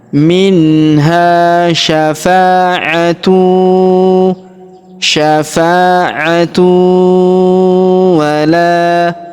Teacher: kita leburkan tanwin unnya ke huruf wau kita tahan dan kita tekan serta kita dengungkan dua sampai 3 harakat